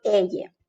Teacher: Double L in Spanish represents a different phoneme, a different sound. It's the same sound we make when we pronounce the letter Y as a consonant in English.